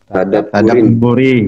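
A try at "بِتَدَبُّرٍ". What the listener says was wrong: Tanwin apa? Tanwin. Tadi banyak yang nggak tanwinkan ini. Tadabburi wa tafakuri. Ini tanwinkan. mencegah untuk tidak tanwin. Tanwinkan.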